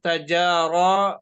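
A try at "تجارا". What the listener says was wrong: Tanwin kan ya? Tujaron nih.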